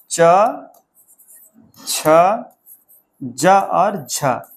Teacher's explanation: स्पर्श के साथ-साथ ही वो संघर्ष भी करते हैं